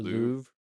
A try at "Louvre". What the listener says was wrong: At least closer. It's Louvre with an R at the end.